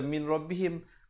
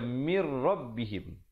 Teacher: tanpa dengung, nun mati bertemu ra